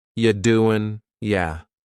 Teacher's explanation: The word you is reduced to ya.